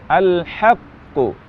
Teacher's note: Qalqalah yang pertama karena setiap huruf yang bertasydid artinya dua huruf dan kata alhaqqu huruf Qalqalah pertama tidak diqalqalahkan lalu huruf Qalqalah yang kedua alhaqqu diqalqalahkan · waktu kita mengucapkan huruf Qalqalah yang bertasydid ada jeda waktu untuk huruf Qalqalah yang pertama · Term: Qalqalah kubra